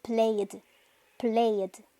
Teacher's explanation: cuando el sonido final lleva vibración de la cuerda vocal, se va a pronunciar solamente como una D.